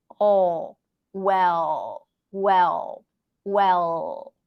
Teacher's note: the dark L the light L touches the upper palette light the dark L has more tension in the back you can even pronounce it without touching